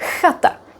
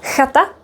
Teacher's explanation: That's because in Czech it is stronger. It's a voiceless velar fricative. You don't have to know that, but the important part is that the sound is created here and there is air flowing.